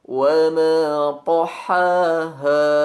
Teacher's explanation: dengan menempelkan punggung ujung lidah pada pangkal dua gigi seri atas dengan sifat itbaq